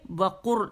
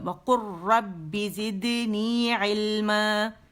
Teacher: وقر، لام نہیں پڑھا جائے گا، وقر قاف را سے ملے گا